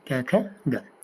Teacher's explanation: क, ख और ग इनको कोमल तालु कहते हैं, और ये कंठ से भी बोले जाते हैं